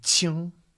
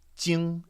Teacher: the really aspirated Q sound as opposed to the J sound